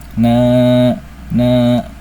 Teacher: Fathah dan alif. Sehingga cara baca dari mad asli ini atau mad thabi ini dipanjangkan sebanyak dua harakat